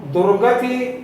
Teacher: दुर्गति ऊपर र जा रहा है इसलिए वहां बल पड़ रहा है